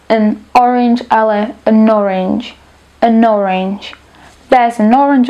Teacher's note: nasledujúce sa začína na samohlásku tieto dve slová stačí hladko prepojiť respektíve spoluhlásku z prvého slova presunúť na začiatok druhého slova